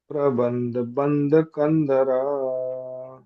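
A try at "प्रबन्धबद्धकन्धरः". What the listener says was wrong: प्रबंध, प्रबंध है पहले, प्रबंध बद्ध उसके बाद बद्ध है, प्रबंध बद्ध कंधरः।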